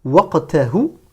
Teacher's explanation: Prononcez bien le qaf comme un qaf emphatique.